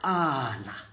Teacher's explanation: And then this one is a palatal click. You produced it by sucking the front of the tongue to the front of the palate.